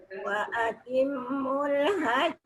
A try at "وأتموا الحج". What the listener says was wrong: Wa atimul tu dengung sikit.